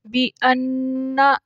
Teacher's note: یہاں نون کے اوپر غنہ ہے کیونکہ اس کے اوپر تشدید ہے